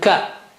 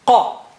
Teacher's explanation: Kaf is a little bit, from the front, and qaf is inside, more inside.